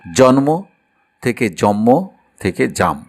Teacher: বাংলা ভাষার আদি স্তর চর্যাপদে এটা হয়েছে একক ব্যঞ্জন কাজ। আর ক্ষতিপূরক বা পরিপূরক হিসেবে পূর্ববর্তী হ্রস স্বরটি দীর্ঘস্বর হয়েছে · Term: দীর্ঘীভবন